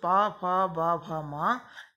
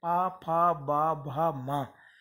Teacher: और लास्ट पा, फा, बा, भा, मा, ये कहलाते हैं ओष्ठ वर्ण, अर्थात इनको बोलते समय हमारे ओष्ठ जो ओंठ हैं दोनों आपस में टकराते हैं